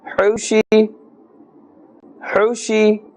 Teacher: This ha is from the center or middle of the throat.